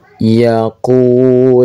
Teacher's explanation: yaqu panjang dua harakat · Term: Mad thobi'i